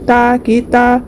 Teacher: ایک الف کی مقدار کھینچ کر معروف پڑھیں گے تا کی تا۔ بن میں اظہار ہوگا، تنوین کے بعد حروف حلقی میں سے ہا ہے تو نون کی آواز کو ظاہر کر کے بغیر غنہ کے جلد پڑھیں گے۔ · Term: الف مدہ